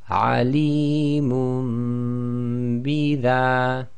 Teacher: So alimun, and then followed by the next word with ba. So we change the nun sakin to a mim sakin inside of the dhammatain. So they've only drawn one dhamma with the mim, and we apply the ghunna. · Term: iqlab